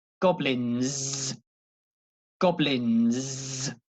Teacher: the S is not an S it's more like a Zed sound · Goblin, And obviously with the S on the end, but the S is not an S, it's a Z. It's more like a Z sound.